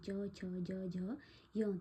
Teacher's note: च छ ज झ य तो ये तालू से बोल जाते हैं